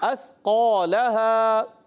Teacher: उर्फ़ मुस्ताली के बाद जो अलिफ आ रहा है ये भी मोटा हो जाएगा